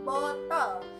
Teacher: vokal belakang sedang bundar dan semi tertutup yang terjadi apabila lidah diangkat dalam ketinggian seperti gede bawah vokal